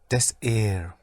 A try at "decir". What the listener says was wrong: Yeah, but don't break it up.